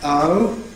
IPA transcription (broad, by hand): ʌʊ